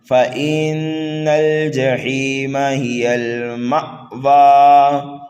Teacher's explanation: فَإِنَّ الْجَحِيمَ هِيَ الْمَأْوَى، نون مشدد ہے، غنہ کر کے پڑھیں گے، مأوا میں دیکھیے حمزہ ساکن ہے، جھٹکا دے کر کے پڑھیں گے، اور مأوا پر جب وقف کریں گے تو یہاں پر وقف بھی سکون ہوگا۔